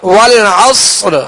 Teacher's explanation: صاد میں سیڑھی کی آواز اور صاد کو پر پڑھیں گے